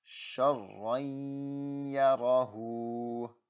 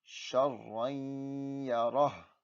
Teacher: And again, if you have a sukun that comes before the shadda, I'm going to ignore it. This ra will jump straight to the ya. Once again, it makes that rai sound. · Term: idgham